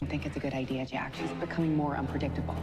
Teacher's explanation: listen to his like little vocal fry kind of thing, or like his voice crack almost